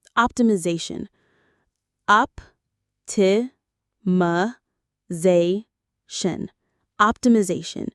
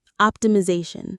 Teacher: The stress is on the Z syllable.